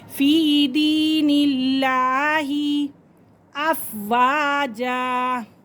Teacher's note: لفظ اللہ کی لام سے پہلے زیر آ رہی ہے تو لفظ اللہ کی لام کو باریک پڑھیں گے